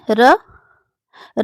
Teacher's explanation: र जो है यह मूर्धन्य वर्ण है